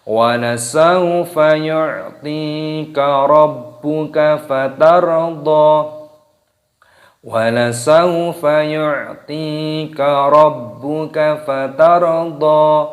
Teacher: Rabbuka fatardha panjangkan dha-nya, ra-nya dibaca sukun dimatikan.